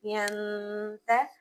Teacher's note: नून साकिन के बाद गुना करेंगे, ये इख्फा करेंगे यानी नून को नाक में छुपा देंगे क्योंकि नून साकिन के बाद ता हर्फ आ रहा है